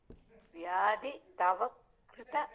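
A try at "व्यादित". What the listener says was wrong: இல்ல வியாதித்த அப்படி பிரிச்சிருங்க.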